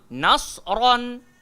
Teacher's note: sod sahaja yang tebal. Nun jangan ikut gemuk.